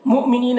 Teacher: مؤمنین، یہاں پر حمزہ ساکنہ ہے واو کی شکل میں، یہاں جھٹکا لگا کر پڑھیں گے